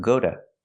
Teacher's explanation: is not stressed you hear T like I need to but after go the t is between vowels so you hear du together